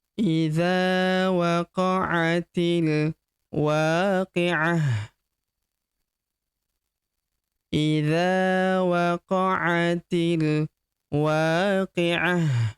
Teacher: Ta marbutah di ujung berubah menjadi ha sukun ya. Karena kita hentikan bacaan kita di sini.